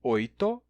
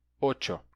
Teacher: o espanhol, na sua formação, transformou a sequência it em ch, transformando oito em ocho